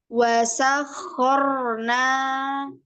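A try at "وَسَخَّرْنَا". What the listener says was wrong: Coba lagi roknya, takrirnya jangan kebanyakan. Artinya kakak rongga mulutnya kurang. Jadi jangan gitu, jangan ya. Wasakhor. Wasakhorna.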